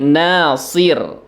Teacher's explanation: ro-nya karena disukunkan dan huruf sebelumnya itu adalah kasroh, maka ro-nya di sini dibaca tipis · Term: huruf tipis